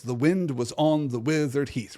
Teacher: Just like Far Over the Misty Mountains Cold from the first chapter, this song's meter is iambic tetrameter. It's 4 pairs of unstressed, stressed syllables.